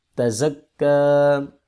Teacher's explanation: تا زبر تا، زا زبر کاف زک، کاف کھڑی زبر کا، تزکا، زا حروف صفیریہ میں سے ہے، اس کو سیٹی کی آواز سے پڑھیں گے، اور کاف کے اوپر کھڑی زبر آ رہی ہے اور کھڑی زبر کو ایک الف کے برابر لمبا کرتے ہیں